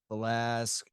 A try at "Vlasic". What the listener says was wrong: Vlasic. You say like Velas. Just like the pickle, man.